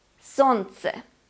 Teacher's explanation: We do not pronounce the sound l. Солнце. We omit l.